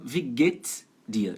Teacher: No dia a dia é mais comum wie geht's dir. Já junta ali o get com o s